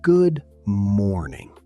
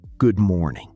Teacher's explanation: The stress is on more. Not good morning.